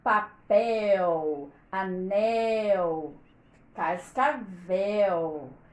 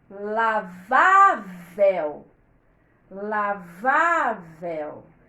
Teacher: a última sílaba é forte por causa do ele